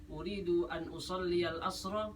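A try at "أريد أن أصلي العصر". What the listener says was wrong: Nadanya turun, belum pertanyaan.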